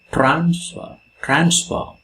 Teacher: Here the stress comes in the initial position.